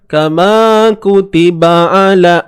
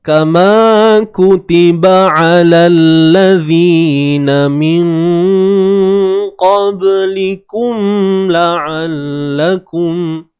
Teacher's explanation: So huruf ain ni pastikan dia daripada kerongkong. Tengah kerongkong.